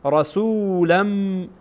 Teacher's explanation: چون اینجا بعد از تنوین میبینیم که در اینجا میم آمده و از حروف ادغام هست و اینها با هم ادغام میشه